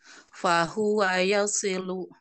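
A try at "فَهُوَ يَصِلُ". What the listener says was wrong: Sin, bukan sin, sod, si. Gitu. Kan yasilu, si. ya sonnya tetap tadi dilatih lagi ditebalkan. Si.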